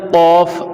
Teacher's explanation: کہتے ہیں زبان کی جڑ اور تالو کے نرم حصہ سے ادا ہوتا ہے